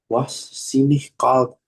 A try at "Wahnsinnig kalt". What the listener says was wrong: G, bukan wah sini. Wahnsinnig kalt. Sama kayak ini dari kata Wahnsinn. Wahnsinn, wahnsinnig kalt.